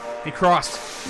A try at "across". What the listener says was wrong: There is no T at the end of a cross.